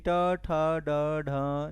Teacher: मूर्धा से टवर्ग का उच्चारण होता है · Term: मूर्धन्य व्यंजन